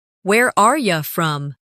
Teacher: In fast speech, are you often sounds like are ya.